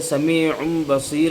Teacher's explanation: سمیع میں تنوین کو ہم پڑھ نہیں رہے بلکہ اس کو تبدیل کر دیا ہم میم سے۔ قاعدہ جو اصل ذہن میں ہونا چاہیے کہ بس نون ساکن اور تنوین کے بعد با آ جائے تو نون ساکن اور تنوین کو جو ہے ہم تبدیل کر دیں گے میم سے۔ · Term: اقلاب